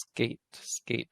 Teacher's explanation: when you say skate in english you don't aspirate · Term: no aspiration